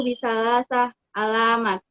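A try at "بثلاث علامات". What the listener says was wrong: Bisalasati alamatin. Dibaca baris akhirnya ya. Kita belajar nahunya sekalian. Bisalasati alamatin.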